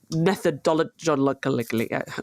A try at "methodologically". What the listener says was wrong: I think you've added a D.